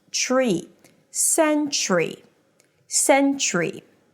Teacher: And then the second syllable is ch tree tree. So it's a ch sound, an r, and a high e.